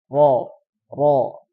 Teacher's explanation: Dia keluarnya di seluruh lidah. Cuman karena dia terhalang oleh lisan menyentuh dengan gigi seri atas, dia menjadi satu titik dan keluarnya di ujung lidah. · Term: inhiraf